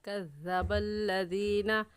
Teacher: الَّذِينَ، کاف باریک ہے، یعنی اس کا مخرج یہ ہے کہ زبان کا آخری حصہ جو کوے کے پاس ہے، جب آپ تالو میں لگائیں گی تو اس سے کاف نکلتا ہے ، تو اس کاف پر ہم اپنے ہونٹوں کو پھیلا لیں